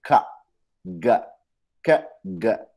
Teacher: velar sounds जो हैं उसमें क्या होता है कि आपकी जुबान फर्दर बैक की तरफ जा रही है